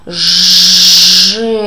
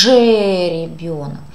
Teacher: Язычок в чашечке наверх, губки тянем вперед, горлышко дрожит. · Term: звук «ж»